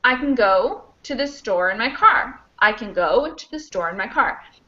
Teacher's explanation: we would have go, store, car, and maybe I. Those are the stressed content words. · can gets kind of squished away because it's not the main verb, right? So it's actually kind of a function word if it's positive, because it's just a helper verb. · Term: reduction